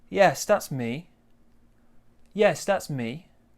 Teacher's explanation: So we go down at the end.